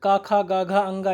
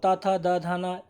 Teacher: का वर्ग को कंठ व्यंजन, चा वर्ग को तालु व्यंजन, टा वर्ग को मूर्धन व्यंजन और ता वर्ग को दंत व्यंजन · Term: स्पर्श व्यंजन